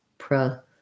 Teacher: I say that it has second syllable stress, so I say the PRE with the schwa